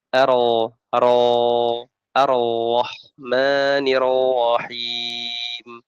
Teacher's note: paling fasih satu getaran langsung menuju huruf berikutnya